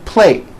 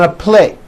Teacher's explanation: I eat on a plate, and you don't hear the T sound. The problem is your listener is not hearing that last consonant sound.